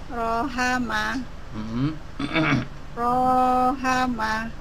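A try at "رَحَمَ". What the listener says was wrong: Pendek.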